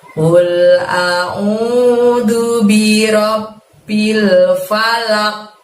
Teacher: Mantulnya seolah-olah ada bunyi huruf qaf berfathah. Jangan falaq, jangan pakai e tapi pakai o ya. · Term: qalqalah kubro